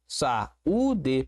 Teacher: Eu tenho um iato. Eu tenho aqui um u tônico e ele tá sozinho na sílaba.